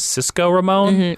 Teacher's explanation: Cisco has those two nice hard K plosives, so they just sound more, it sounds more like energetic and enticing.